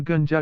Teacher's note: तालव्य ध्वनियों से पहले न का उच्चारण तालव्य ध्वनि की तरह होता है